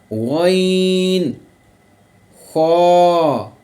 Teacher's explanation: ये जो हरूफ हैं ये हलक के मुंह की तरफ वाला जो हिस्सा है वहाँ से अदा किए जाते हैं, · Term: गैन और ख्वा